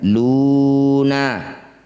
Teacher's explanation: dhammah diikuti wauh, wauhnya ada sukun. Maka jadilah bacaan mad atau bacaan panjang